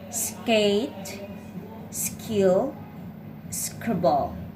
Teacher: The K is also unaspirated after the S consonant.